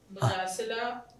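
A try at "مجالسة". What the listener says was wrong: مجاسلہ، آپ نے بولا مجاسلہ،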